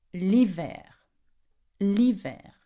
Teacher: do not pronounce the H in hiver, okay? We pronounce the I.